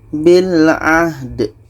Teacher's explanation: dal ini, ketika sukun, adalah qolqolah. Ada pantulan